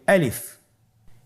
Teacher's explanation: গলা এবং মুখের শূন্যস্থান হতে আলিফ হরফটি উচ্চারিত হয় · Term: মাখরাজ